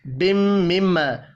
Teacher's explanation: دو میم مشدد ہیں، دونوں پر غنہ کریں گے. الف مدہ کو ایک الف کے برابر کھینچ کر پڑھنا ہے.